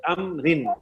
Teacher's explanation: امرن میں جو ہے را کے نیچے کیا ہے, زیر ہے, تو را کیسی پڑی جائے گی, باریک ہو گئی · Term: را باریک